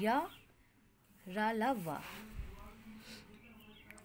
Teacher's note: इन व्यंजनों का उच्चारण स्वरों एवं व्यंजनों के बीच कासा होने के कारण अंत्यस्थ व्यंजन है। इन व्यंजनों का उच्चारण करते समय जीभ मुंह के किसी भी भाग से पूरी तरह स्पर्श नहीं करती है।